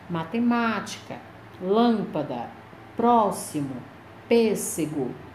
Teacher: todas essas palavras tem como sílaba tônica é a antepenúltima sílaba elas são proparoxítonas são acentuadas graficamente ok quando acentuação das paroxítonas